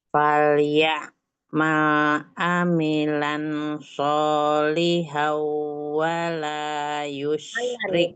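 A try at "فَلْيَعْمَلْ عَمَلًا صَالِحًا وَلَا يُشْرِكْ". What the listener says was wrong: Itu bukan amilang. Mimnya fathah. Ya, amalan. Tuh fathah tanwin ketemu dengan sodnya ikhfa ya. Dia gunakan amalan solihau. Tadi kebacanya izhar.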